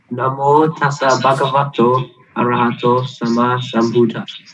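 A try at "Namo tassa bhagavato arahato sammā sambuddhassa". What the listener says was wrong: I'm hearing it short. See if you can lengthen it. Actually, the length is described in our scriptures.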